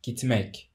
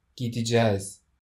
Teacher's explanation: Notice that the non-continuous consonant t becomes d because the future suffix begins with a vowel